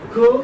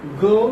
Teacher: k is voiceless, ga is voiced